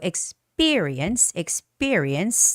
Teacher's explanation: That has a second syllable stress.